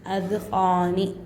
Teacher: قاف کو ایک الف کی مقدار کھینچنا ہے